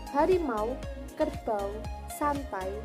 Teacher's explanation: dua vokal yang diucapkan sekaligus pelafalannya menjadi satu bunyi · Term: diftong